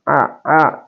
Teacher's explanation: dia adalah di pertengahan tenggorokan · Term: wastul halqi